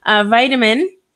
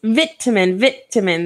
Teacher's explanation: in American English, I'm actually saying the T as a D, and I'm also emphasizing the first part of the word, whereas in British English, they emphasize the middle of the word